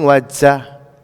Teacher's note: So the Jim is coming more towards the front of the mouth.